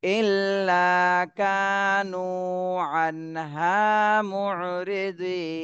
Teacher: এই নুনে জজম দিতে হবে, এর আগে তিন আলিফ টান দিতে হবে।